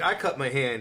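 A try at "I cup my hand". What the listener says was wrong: He cups. Cups. Sounded like cut. I cut my hand.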